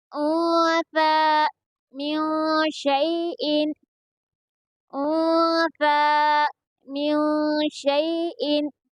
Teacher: یہاں پر یا لین ہوگا کیونکہ یا ساکن سے پہلے شین کے اوپر زبر ہے